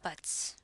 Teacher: there is a voiceless sound. So z becomes s. So in the end, you have buts, which is the right sound.